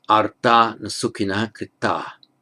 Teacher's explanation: And it's the nominative plural here, so it would be on its own arta with the visarga, but the visarga drops off, of course, because of the following voiced consonant na. So it's arta na sukhinaha krita.